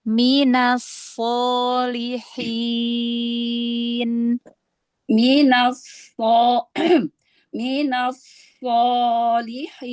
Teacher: Ini tafkhim tingkatan yang pertama, fathah setelahnya alif.